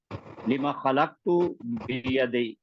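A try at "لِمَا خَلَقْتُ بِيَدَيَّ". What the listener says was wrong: لما تو تھوڑا لمبا کیجئے سر۔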